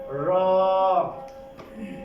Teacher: জিহ্বার আগার উল্টো পিঠ তার বরাবর উপরের তালুর সঙ্গে লাগিয়ে